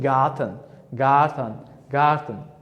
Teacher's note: Bu yerda r harfi undosh harfdan oldin kelayotganligi uchun buni yumshoqroq va talaffuzdan tushiribroq qoldirib talaffuz qilyapman.